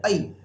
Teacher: तो ऐ में क्या होता है बेटा? ये पहले अ आया और बाद में आया ए, तो दोनों को मिलकर के हो गया ऐ